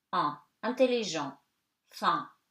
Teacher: EN before a consonant and at the end of the word, you know that N, you kind of eat it at the end and before a consonant, it becomes nasal